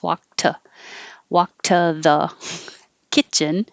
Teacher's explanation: I'm keeping the T here because walk ends with a voiceless sound. So the T will stay voiceless.